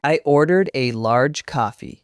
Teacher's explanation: The stress on large shows the correction.